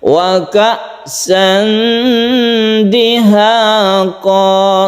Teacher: Tanwin bertemu dal, ini ikhfakan, kita dengungkan, kita panjangkan. Wa ka'san dihaqa, samarkan antara tanwin bertemu dengan dal ini.